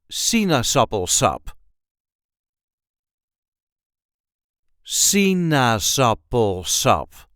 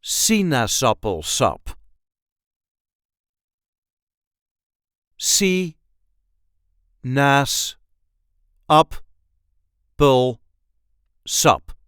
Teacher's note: There is a light emphasis on the first syllable, Sinaasappelsap.